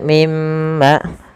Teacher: Mim yang kedua yang itu ditahan yaitu adanya ghunah.